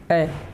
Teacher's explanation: ए जो है ये कंठ तालु दोनों से ही उच्चारण स्थान है